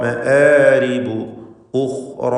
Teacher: ഖാ തഫ്ഖീം ചെയ്യേണ്ട ഇസ്തിഅലാൻ്റെ ഹർഫാണ്. ഖാന് സുക്കൂനാണ്. നിസ്ബിയ തഫ്ഖീം. ശേഷം റാഉം അതിൻ്റെ അലിഫും അവയ്ക്കും തഫ്ഖീം നൽകണം.